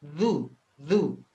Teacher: du itu dijepit ya antara gigi ya Zu Zu ya du dikeluarkan lidahnya tib begitu kira-kira Pak